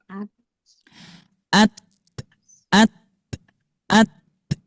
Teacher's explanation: dalam mengucapkan huruf ta ini harus mengalirkan napas tapi suaranya ditahan. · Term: hames